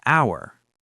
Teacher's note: An hour. H is silent, starts with ow sound, vowel.